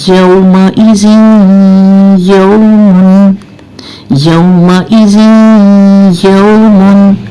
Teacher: ज़ेर तनवीन के बाद या आ गया, इसका मतलब है यहाँ इदगाम तो होगा लेकिन गुन्ने के साथ होगा।